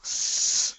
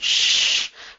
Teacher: the snake sound, the s versus the sh. Now, they're both unvoiced.